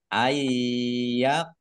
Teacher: jelas ayqula nun sukun bertemu dengan huruf ya bacaan Idgham diunah masuk dengan mendengung yaitu mendengung Ya ditahan kira-kira dua harakat biar tampak mendengungnya